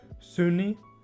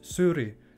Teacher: Syni auf Gägisch, also mit N in der Mitte, Syni, aber auf Toskisch, auf Standardalbanisch heißt es Syri mit R